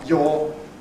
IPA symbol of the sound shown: jɔː